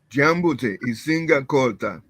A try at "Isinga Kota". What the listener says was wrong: Kota. You give the accent. The answer just no accent.